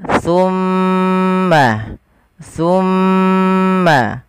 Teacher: Pada lafal bacaan tsumma, di sini ada bacaan gunnah pada lafal mim yang berharakat tasydid